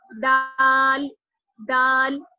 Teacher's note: جہاں سے ہم نے تا ادا کیا تھا وہیں سے دال ادا کریں گے، یعنی زبان کی نوک اور ثنایا اولیہ کی جڑ